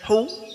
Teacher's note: Kemudian hu, bibirnya dimonyongkan, indimamus syafatain.